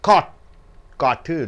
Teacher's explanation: at the end of the word it's kept inside the mouth it is not spit out